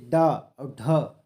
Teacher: ये ड और ढ जब बोलते हैं तो हमारी जीभ उसी मूर्धा में टच होती है इसलिए इसे मूर्धन्य कहते हैं